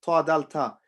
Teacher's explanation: the tip of the tongue, touches the gums